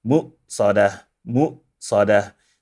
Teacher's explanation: We have a silent hamza after the emphasized meme.